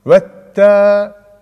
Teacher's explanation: Elif lamda hareke olmadığı için vav'ı ne yapıyoruz? Direkt T'ye bağlıyoruz. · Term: idgam-ı şemsiye